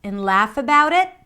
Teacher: notice what happens to the pitch. It goes up.